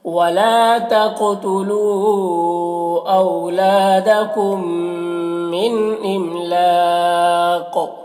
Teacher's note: इमलाक़ यहाँ पर वक्फ की सूरत में कौफ की जो दो ज़ेर की तनवीन और सुकून से बदल जाएगा, तो फिर कौफ में कलकला होगा और कौफ को पुर पढ़ना है